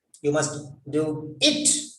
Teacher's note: the stress is on you that means the importance is on you that means not somebody else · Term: sentence stress